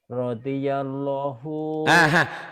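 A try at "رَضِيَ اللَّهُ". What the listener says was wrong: Itulah pada Allah. Kalau lama dibacanya biasa aja. Radhiyallahu, jangan law. Hanya untuk Allah aja yang begitu. Kalau yang lain mah enggak, lamnya biasa aja, netral. Bukanlah pada Allah ini mah ya.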